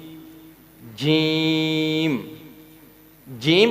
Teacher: جیم ادا کرتے ہوئے زبان کا جو پیٹ ہے وہ ہم نے اوپر تالو کے ساتھ لگانا ہے تو جیم ادا ہوگا.